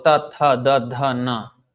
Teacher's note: Then ta is coming further to the end of the mouth, which is the teeth, the dentals.